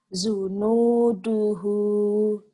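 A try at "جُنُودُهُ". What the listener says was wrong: Junu, bukan zunu. Ju keras. Junuduhu.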